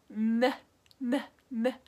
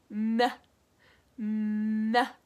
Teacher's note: It's like right behind my teeth and the tip of my tongue touches the top of my mouth.